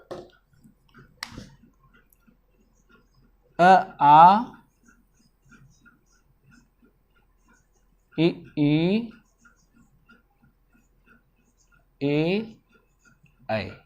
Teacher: जब आप उच्चारण करेंगे स्वर का अवृत्ताकार में तो आपके ओठ क्या होंगे? फैल जाएंगे। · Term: अवृत्तमुखी स्वर